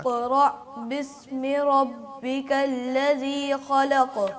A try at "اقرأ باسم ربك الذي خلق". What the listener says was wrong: और जाल को भी वाज़े करें। बस आखिरी चीज़ यही थी कि जाल अल्लज़ी खलक़।